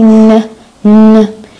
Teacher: هذا النازل وين كان ال point of articulation تبعه طبعا هو alveolar